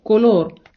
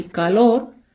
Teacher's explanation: о в іспанській треба вимовляти так само як о в українській і в жодному разі не сповзати на а бо погодьтесь що колор і калор це не те ж саме